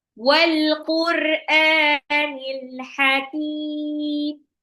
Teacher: Alif lam kalau ketemu qof itu dibaca jelas. Alif lam qamariah.